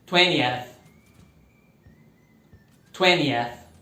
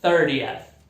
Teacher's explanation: No inglês americano, aquele T no meio some também na pronúncia